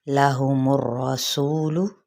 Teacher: मीम की पेश को रा के साथ, रा पे एक हल्की सी तकरार के साथ रा पुर।